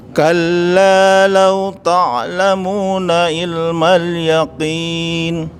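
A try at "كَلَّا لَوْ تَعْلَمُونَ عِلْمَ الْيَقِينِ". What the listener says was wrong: Ayo, sudah Pak. Barakallahu fiik. Yaqaf itu seperti itu Pak. Jadi enggak ada basahnya.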